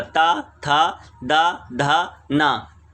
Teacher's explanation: ता वर्ग में क्या है, दंत से उच्चारित, यानी दांत का स्पर्श होगा